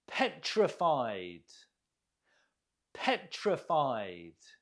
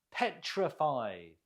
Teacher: Note the stress on the first syllable.